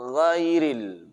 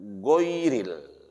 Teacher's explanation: Gha dan kha. Kalau gha ini sifatnya jar, udara tertahan.